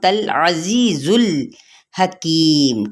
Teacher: ता की ज़बर को लाम के साथ मिलाएंगे, लाम को हिलाना नहीं है